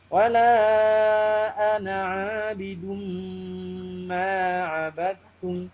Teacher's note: Ha ni nun mati jumpa dengan mim. Kena baca nun mati masuk dalam mim. Ilat. Dun jadi dum. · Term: idgham ma'al gunnah